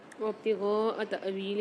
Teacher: الف کے اوپر سکون ہے تأویلی میں، تو یہاں ہم جھٹکا دے کے پڑھیں گے